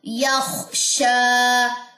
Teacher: شین میں تفشی کی صفت ہے، آواز پھیلے گی اور 2 سیکنڈ کے لیے آپ نے اس کو لمبا کرنا ہے کیونکہ اس کے اوپر کھڑا زبر ہے.